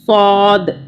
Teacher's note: اس کو سین کی آواز میں ساد بھی نہیں پڑھنا، اس کو پڑھنا ہے صاد، صاد۔